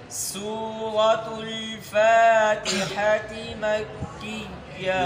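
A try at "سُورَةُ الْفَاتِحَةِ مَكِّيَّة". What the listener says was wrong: ये तुल है ना, तुल तालाम पेश तुल, ये आपका ठीक नहीं है। चाहे इससे पहले ज़बर हो चाहे ज़ेर हो, लेकिन आप ये ठीक नहीं पढ़ते हैं।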